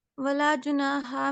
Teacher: ولا جناح میں جو یہ الف ہے یہ تو الف پھر باریک پڑھا جائے گا